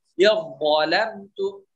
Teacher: zal bertemu dha, ini satu makhraj tapi sifatnya berbeda, maka bacanya diidghamkan. Ya zalamtum, langsung masuk. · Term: idgham mutajanisain